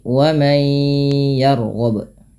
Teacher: Maka cara membacanya adalah dengan mengidghamkan atau memasukkan nunnya kepada huruf setelahnya, yaitu di sini huruf nunnya dimasukkan ke ya dan kemudian ditahan dengan gunnah, maka dinamakan idgham bi gunnah